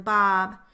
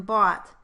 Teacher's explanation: One thing that helps is that the ah sound as in bob is produced with the lips, not rounded.